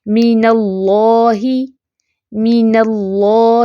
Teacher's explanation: नून light और अल्लाह का लाम मोटा